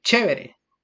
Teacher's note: el rasgo palatal que es lengua y paladar